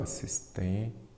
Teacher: Assistência, a sílaba forte é qual? A penúltima. Se a sílaba forte é a penúltima, ela é uma palavra paroxítona.